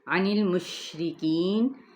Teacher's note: عین کو وسط حلق سے، نون کی زیر کو لام کے ساتھ، شین پہ تفشی لیٹر ہے، مشرکین، را باریک ہوگا اپنے کسرہ کی وجہ سے، کی پہ یا مدہ، نون پہ وقف کیا تو وقف بالاسکان۔